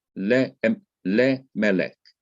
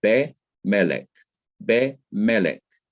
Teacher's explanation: the simple schwa is like that E, which you pronounce so fast that you can hardly even hear it